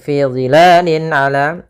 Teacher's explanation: Kemudian lin ala, di sini fi dhilalin ala ada bacaan izhar halqi, yaitu ditandai dengan adanya kasratain, yaitu an in un atau kita namakan dengan tanwin, an in un bertemu dengan huruf ain, yang mana ain termasuk huruf izhar dan huruf halq, yaitu huruf yang keluar dari tenggorokan, maka harus jelas.